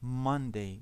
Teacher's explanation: The stress is on the first syllable, Monday. We don't say Monday, we say Monday.